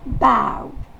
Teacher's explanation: Le A va se prononcer E. Et la syllabe accentuée, c'est ow